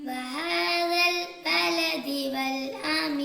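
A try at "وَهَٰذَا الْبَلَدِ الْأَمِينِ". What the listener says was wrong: ഇവിടെ വൽ അമീൻ ഇല്ല, ബലദിൽ അമീൻ എന്നാണ്. വഹാദൽ ബലദിൽ അമീൻ.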